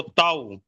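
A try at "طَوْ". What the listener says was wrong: তো এ নয়, ত ওয়াও জবর তও, ত।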